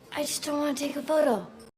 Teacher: not pronouncing the T in the word just, and that is okay, especially when you connect it to another word that starts with a consonant. You will notice that often people drop the T.